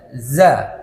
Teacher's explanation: posisi Za cara mengeluarkan hurufnya yaitu coba cari hujung lidah ya ujung lidah kita coba Menghadap dan mendekat di antara gigi seri atas dan bawah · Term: huruf Za